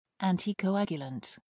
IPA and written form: ˌæntɪkəʊˈæɡjʊlənt (anticoagulant)